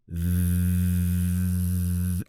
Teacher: You have the unvoiced, unvibrating sound, like that, your tongue between your teeth, and the vibrating, voiced TH sound, which is th, and you can put your hand on your vocal cords and feel them vibrating